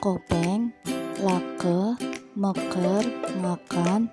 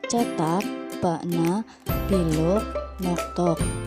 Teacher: Bunyi K plosif velar pada kata kopeng, lake, meker, makan, dengan bunyi glotal plosif pada kata cetak, bakna, biluk, noktok.